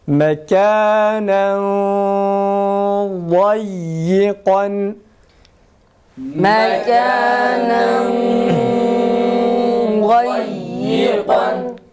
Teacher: Öyleyse nasıl mekanen dayyikan şeklinde değil de mekanen kalın, bat kalın olduğu için genizden kalın ses çıkarıyoruz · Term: ihfa